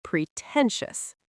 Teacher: Pretentious stresses the second syllable, pretentious.